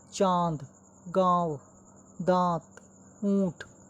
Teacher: अनुनासिक का उच्चारण नाक और मुंह की सहायता से किया जाता है